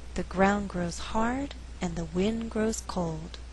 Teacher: in this faster reading only four content words are being stressed ground hard wind cold the resulting rhythm is 1 and 2 three and four d